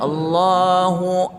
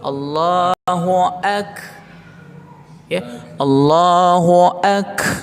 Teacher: kaf itu dia harus sedikit ada keluar nafas ya. Jangan tak ya, jangan kita baca, jangan nafas kita tertahan ya.